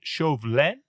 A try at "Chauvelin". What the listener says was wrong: It's like Chauvelin. It's not Chauvelin. It's L-I-N. Chauvelin. No R's at all.